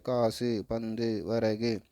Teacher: இது தனியாக ஒலிக்கும்போது ஒரு மாத்திரை, குறுகி ஒலிக்கும் பொழுது ஒன்றிலிருந்து அரை மாத்திரையாக குறுகி ஒலிப்பது. சொல்லின் இறுதியில் வரும் வல்லின உகரங்கள் கு, சு, டு, து, பு, தன் ஒரு மாத்திரையிலிருந்து குறைந்து அரை மாத்திரையாக ஒலிப்பது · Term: குற்றிய லிகரம்